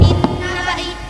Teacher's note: vokal panjang dibaca pendek